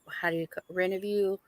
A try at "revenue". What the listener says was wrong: You did. You called it Renoview. You're weird.